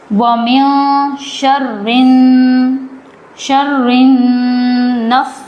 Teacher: میم اور نون جب اس پر تشدید ہوتی ہے تو یہاں پر گنہ ہوگا. ایک الف کے برابر آواز کو گنہ کریں گے جس نون اور میم پر تشدید ہوتی ہے.